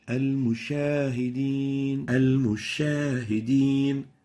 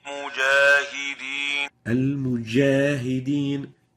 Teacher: Musha is wrong. We're pronouncing a sheen instead of the jim.